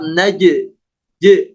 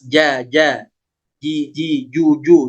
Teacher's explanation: Jadi huruf jim ini dia kuat suaranya. Tidak boleh ada desisan.